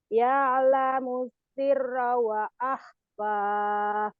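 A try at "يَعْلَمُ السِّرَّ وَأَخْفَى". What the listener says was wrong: wa akhfa bukan wa'ah tapi wa akhfa. Ya'lamus sirra. Ada tasdid dua tuh.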